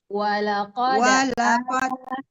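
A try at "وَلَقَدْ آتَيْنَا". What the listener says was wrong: panjang A-nya. Walaqad ataina, A-nya panjang Bu. Tadi Bu nggak dipanjangin.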